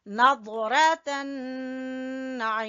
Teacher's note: نون مشدد کا غنہ اور ضاد کو پر پڑیں گے